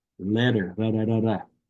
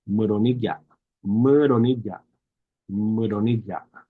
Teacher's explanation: It's more like the sound of the two T's in the word letter. Letter is a quick flop of your tongue on the roof of your mouth.